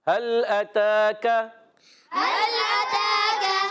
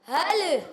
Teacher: ہا کو لام سے ملانا ہے، لام ساکن ہے، مگر لام کو ہلانا نہیں ہے